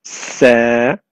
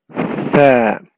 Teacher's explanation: the sa comes out when the tip of the tongue touches the edge of the top two front teeth so the tip of your tongue comes out between your teeth